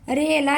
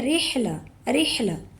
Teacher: ہا کی آواز حلق سے نکلنی چاہیے